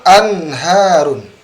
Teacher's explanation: Nun bertemu dengan ha. Artinya antara makhraj nun dengan ha ini jauh karena jauh maka dijelaskan. Nunnya jelas, ha-nya juga jelas.